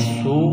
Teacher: سین کو باریک کرنا ہے، سیٹی کی آواز پیدا کرنی ہے، واو مدہ ہے، ایک الف کے برابر کھینچنا ہے، یعنی واو ساکن سے پہلے پیش آ جائے تو واو مدہ کہلاتا ہے، اس کو ایک الف کے برابر کھینچنا ہے۔